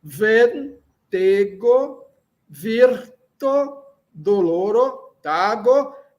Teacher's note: E lembrando que todas as palavras são paroxítonas, não é? É, a acentuação, a sílaba tônica é a penúltima, na penúltima sílaba